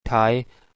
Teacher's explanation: these sounds are pnom are pronounced at the alveolar Ridge so there is a closure at the alveolar Ridge